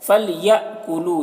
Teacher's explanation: یہاں پر حمزہ ساکنہ ہے، جھٹکا لگے گا